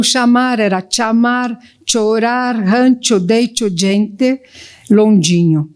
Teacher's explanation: As fricativas pós-alveolares eram realizadas como africadas palatais.